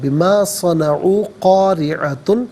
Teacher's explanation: قاریعۃ میں را کے نیچے زیر ہے تو را کو باریک کر کے پڑھا جائے گا